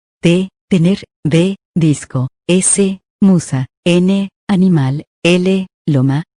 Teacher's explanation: Dentales o alveolares. Se producen cuando la lengua toca los alvéolos, es decir, la parte interior de los dientes superiores.